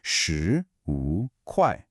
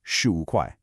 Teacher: Here we have a rising second tone, sh, followed by a falling rising third tone, wu, and we finish with that same strong fourth tone, kuai, slowly, shi, wu, kuai, and at a natural pace, shu, wu, kuai.